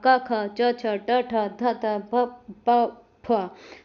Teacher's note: अब आते हैं नॉन वेबरिंग या अघोष में इनमें स्वर तंत्रियों में कोई कंपन या गूंज नहीं होगा। सभी वर्णों के पहले जो पहला और दूसरा जो वर्ण होगा क, ख, च, छ, ट, ठ, थ, थ, प, प, फ।